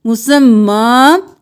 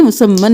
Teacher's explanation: ایک الف کے برابر کھینچتے ہوئے ہم وقف کریں گے